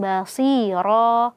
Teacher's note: bibirnya tidak monyong ya karena shadnya kasrah bukan dommah